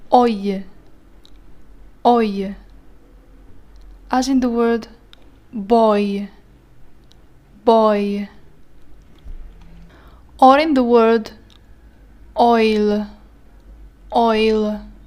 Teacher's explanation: يبدأ ب O وينتهي ب I